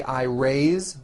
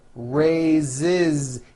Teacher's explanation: even though it is spelled with an S it's pronounced with a voiced Z raised so we say I raised with a voiced Z ending